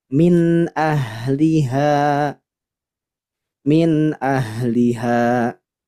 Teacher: ha Ain ha Gin ketika sebelumnya ada nun sukun atau tanwin maka dibacanya jelas dengungnya hanya sedikit saja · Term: zhar halqi